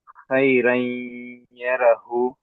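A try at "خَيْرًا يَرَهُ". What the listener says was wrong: ఇక్కడ కొంచెం దీర్ఘం లాగా వావ్ సగీరా ఉంది కదా. ఇక్కడ ఏముందో చూడండి ఒకసారి. మీమ్ కస్రా యాసుకు యామద్ ఉంది కదా.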